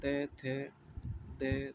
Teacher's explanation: दंत्य में इनका उच्चारण में जीवा को दांतों पर लगना होता है